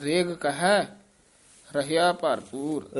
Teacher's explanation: ਰੇਗ ਪੋਲਾ ਹੀ ਬੋਲਣਾ ਰਿਗ ਨਹੀਂ ਕਹਿਣਾ